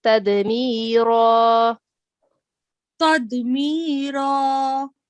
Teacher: you have to pronounce this ra with a thick sound because we will change its tanween into a fatha. So it is tadmira.